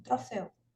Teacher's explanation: em troféu, eu pronuncio o E com mais força do que o U. Então, o E é vogal e o U é semivogal, né? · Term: ditongo aberto, ditongo